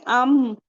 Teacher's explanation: फिर हम कहेंगे अम तो हमजा मफतू का इजाफा करेंगे यानी ज़बर वाला अलिफ पहले लगाएंगे फिर हम चेक करेंगे कि कहां से तो हम बोलेंगे अम तो अम में हमारे लिप्स के आउटर पार्ट मिल रहे हैं